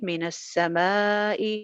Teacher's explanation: الف مدہ کے بعد حمزہ ہے تو لہٰذا مد آ جائے گی. مد کو 2 الف لمبا کریں گے